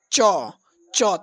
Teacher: तो च वर्ग का जो उच्चारण स्थान है आप च बोलने का कोशिश कीजिए। च तालू से च बोला जाता है।